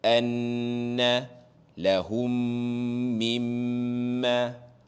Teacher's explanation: Nampak saja nun sabdu, mim sabdu kena baca dengung dan panjang dua harakat.